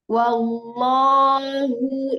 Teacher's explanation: Lo-nya tebal, wallahu pangkalnya naik